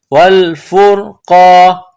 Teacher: نقطوں والا قاف ہے اس کو موٹا کرنا ہے